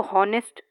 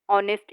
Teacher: that H is silent in this spelling, so we use an. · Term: silent H